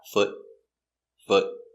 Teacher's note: remember the sound it's the short uh foot not the long o